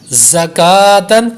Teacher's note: زا پڑھے تو سختی کی ہو اور سیٹی کی آواز پیدا ہو. زا بھی حروف صفیریہ میں سے ہے.